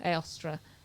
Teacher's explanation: Eostra with the stress on the last syllable